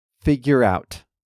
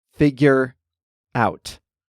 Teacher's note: Now, if you've been listening closely, you probably heard that I pronounce figure out like it's one word. The R sound at the end of figure leads right into the sound in out